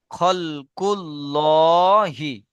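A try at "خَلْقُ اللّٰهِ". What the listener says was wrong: খাল নয়, খাল হবে না, খল।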